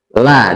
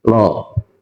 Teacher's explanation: kalau tarkib berarti lamnya itu adalah la dibacanya. Kalau tafhim lo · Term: lam jalalah